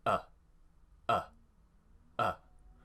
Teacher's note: My mouth is relaxed. My tongue is central. It's just in the middle of my mouth. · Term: schwa sound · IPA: ə